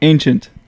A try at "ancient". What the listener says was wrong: There's still a little bit of K in there for no ancient. Ancient.